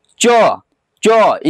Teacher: चो जी देखिए किसको स्पर्श कर रहा है, तालु को।